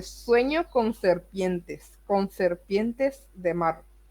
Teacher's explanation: Hay una sonoridad repetitiva medio monótona de la S, porque la S suena muy largo. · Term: repetición de sonidos